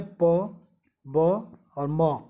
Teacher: प वर्ग के जितने भी वर्ण होते हैं वो ओष्ठ ध्वनि होती है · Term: ओष्ठ ध्वनियाँ